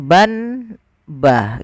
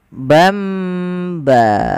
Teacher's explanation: Apabila kita mendapati di dalam bacaan Al-Quran kita, teman-teman, ada nun sukun atau dia tanwin an, in, un, bertemu setelahnya satu huruf saja, yaitu huruf ba, maka nanti suara nunnya dirubah atau suara tanwinnya dirubah menjadi mim